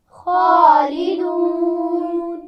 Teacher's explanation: خا پر کھڑی زبر ہے تو اس کو بھی الف مدہ کی طرح کھینچ کر پڑھا جاتا ہے, اور اس میں واو مدہ بھی ہے خالدون, اور خا کو موٹا بھی پڑھنا ہے, اس کا خیال رکھیے.